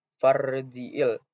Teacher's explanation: Nah, pada huruf ro itu sukun dan dibacanya takfim karena ro sukun didahului oleh yang berharokat fathah maka dibaca tebal